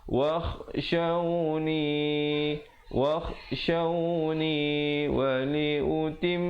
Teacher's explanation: didengungkan di situ, mim sabdu 2 harakat, wajibul gunnah